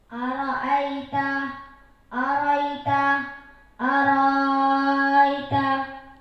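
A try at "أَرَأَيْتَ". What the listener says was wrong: Tambah isba. tambah biar 6, beda dengan 4. Itu 4.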